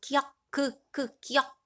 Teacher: 그래서 우리 한자음으로 아음이라고 얘기했죠. 자, 혀뿌리가 목구멍을 막으면서 혀가 뒤로 당겨지면서 나는 소리 기역입니다.